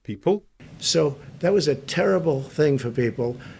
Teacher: to appear assertive you normally go down towards the end so the beginning of people is lower than terrible and thing